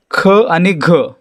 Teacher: ज्या वर्णांचा उच्चार करताना ह चा उच्चार होतो त्यांना काय म्हणायचं? महाप्राण म्हणायचं।